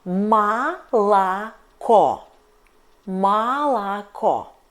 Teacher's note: But first and second O is unstressed. So we read them like A.